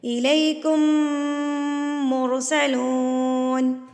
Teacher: میم ساکن کے بعد اگر میم آ جائے تو گنہ کر کے ادا کیا جائے گا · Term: ادغام شفوی